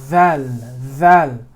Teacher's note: when you're saying the dhal, the tip does not bend down. The tip stays where it's supposed to be.